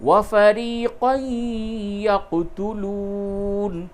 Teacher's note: تنوین کے بعد یا ہے، ادغام مع الغنہ ہوگا